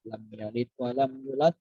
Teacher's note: Lam yalid itu qalqalah sughra